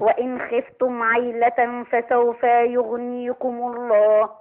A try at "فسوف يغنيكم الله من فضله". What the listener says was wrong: ما تبلغيش أوي بالفتحة يا حاج عطيات ما تدرغيش قوي بالفتحة لا فسوف يغنيكم الله من فضله